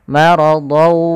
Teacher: Don bunyinya ada suara n, maka dia sama seperti suara nun yang dimatikan. Maka ketemu waw, tanwinnya tadi hilang, masuk langsung ke huruf waw. Maka maradaw sambil dimasukkan ke khayshum karena dia bi gunnah dengan gunnah. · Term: idgham bi gunnah